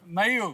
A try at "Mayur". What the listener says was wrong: You have to roll the R.